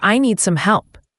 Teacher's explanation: That's a subtle but important detail, for I need some help. The D at the end of need is often very light, almost silent, especially before some, and some help can sound like some help.